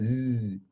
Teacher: it's a voiced consonant. It means it has vocal fold vibration, and it has noise or a certain sound that is made by noise somewhere along the vocal tract